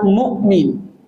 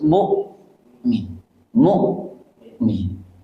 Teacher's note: Nah, mukmin ini tidak boleh ada aliran suara. Putus.